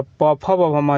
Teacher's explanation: प, फ, ब, म, जे ओष्ठ से होता है। देखिए प बोल के देखिएगा, आप लोग खुद ही पता चलेगा कि कहाँ से इसका आवाज़ आ रही है, तो यह होस्ट से हो जाएगा।